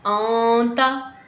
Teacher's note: اب یہاں پہ پھر توجہ دیں، آنتا، نون ساکن کے بعد حروف اخفا میں سے حرف آ رہا ہے تو ہم یہاں پہ نون کو اخفا کر کے پڑھیں گے، غنہ کریں گے، نون کی آواز کو ہم ناک میں لے جائیں گے